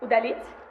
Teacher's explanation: So even though the stress falls on this vowel over here, you can see that it's the pretonic vowel that is much longer in duration. You can see this whole area of energy over here. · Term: Pretonic Prominence